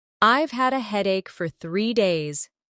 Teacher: Stress headache and 3 days.